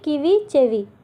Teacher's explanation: కకారం అనేది చకారంగా మారింది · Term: తాళవ్యీకరణం